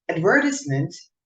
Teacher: the word advertisement is pronounced with the stress on the second syllable